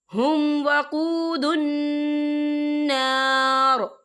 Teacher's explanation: وَأُولَئِكَ هُمْ وَقُودُ النَّارِ، یا دیکھیں ہم، یہاں میم ساکن ہے، میم ساکن کے بعد جو ہے واو آ رہا ہے، تو یہاں پر اظہار شفوی ہوگا، ہم یہاں غنہ بالکل نہیں کریں گے، ہم اسے بنا غنہ کے پڑھیں گے